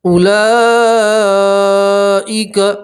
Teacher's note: مد متصل ہے اس لیے آپ چار الف کے برابر مد کو کھینچیں گے